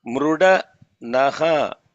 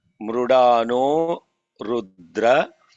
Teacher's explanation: That Visarga followed by Rudra, the Visarga turns into O.